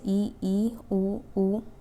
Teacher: अ ओ ठीक है तो ये इसमें आ जाएगा हमारा और संवृत क्लोज क्लोज जिसमें कि मुख द्वार लगभग बंद रहता है